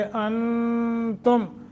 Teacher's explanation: नून साकिन के बाद ता हरूफ इख्फा में से है, गुन्ना करके पढ़ेंगे।